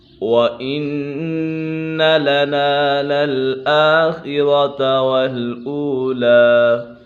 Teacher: وَإِنَّ نون مشدد ہے، نون مشدد میں ہمیشہ غنہ ہوتا ہے۔